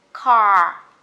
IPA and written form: ca: (car)